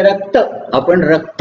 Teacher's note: जेव्हा जोडाक्षर शब्दांच्या अंती येतात तेव्हा हिंदी भाषक कधीही अ लावत नाही आणि मराठी भाषक हमखास अ लावतो. म्हणजे रक्त आपण रक्त म्हणतो आणि ते रक्त, म्हणजे रक्त हा जो अ आहे त्यातला तो मराठी भाषक लावतो, हिंदी भाषक रक्त नाही तो कधी रक्त म्हणणार नाही.